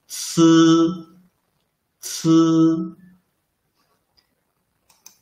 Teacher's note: c is an aspirated, unvoiced sound. The sound is very similar to the last sound of students.